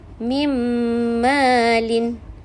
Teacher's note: Seolah-olah nun tu dah jadi mim, menggabungkan nun sakinah ke dalam mim.